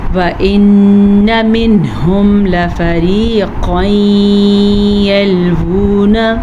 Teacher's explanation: وَإِنَّ نون کا غنّہ ادا کرنا ہے کیونکہ نون کے اوپر شد ہے